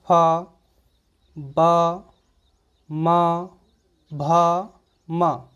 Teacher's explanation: इसको बोलिए पा, तो दोनों ओंठों को देखेंगे आपस में मिल जा रहे हैं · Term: ओष्ठ व्यंजन